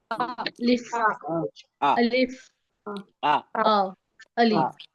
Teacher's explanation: मखरज नहीं होता है, खाली मुंह से अदा होता है।